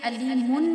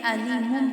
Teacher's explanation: تنوین میں جو نون کی آواز آتی ہے اس کو ہم میم میں بدل دے دیں گے. وہ کیسے کہ علیمن نہیں پڑھیں گے، علیمم پڑھیں گے. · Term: اقلاب